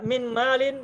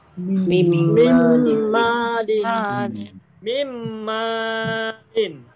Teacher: karena idgham maka bunyi nunnya dimasukkan ke bunyi setelahnya mim. Sehingga min malin maka bacanya menjadi mim malin. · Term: idgham biguna